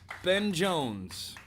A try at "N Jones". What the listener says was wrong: It's N Jones. The B is silent.